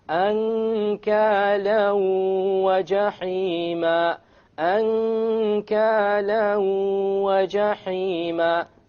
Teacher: You merge the tanween along with the waw and you move on. You don't pronounce the end sound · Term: idgham with ghunna